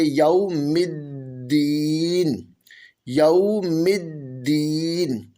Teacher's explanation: الرحمن الرحیم، یوم الدین، یہاں پر واو ساکن سے پہلے زبر ہے، یہاں پر واو لین ہوگا، اس حرف کو نرمی سے پڑھیں گے، لمبا نہیں کریں گے، جھٹکا نہیں دیں گے۔ دال حروف قلقلہ میں سے ہے اور مشدد ہے، جماؤ کے ساتھ قلقلہ کریں گے، یوم الدین، یوم الدین۔